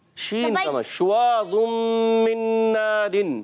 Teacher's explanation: زبان کا درمیان اور تالو کے درمیان والے حصے سے